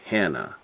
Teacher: Emphasis on the first, Hannah.